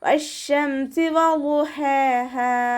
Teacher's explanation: ഹ തൊണ്ടയുടെ മധ്യഭാഗത്തു നിന്നാണ് വരുന്നത്, വസത്തുൽ ഹൽക്കിൽ നിന്നും. അതിൻ്റെ സൗണ്ടിനെ ഹംസയായി പോവാതെ ശ്രദ്ധിക്കുക കേട്ടോ.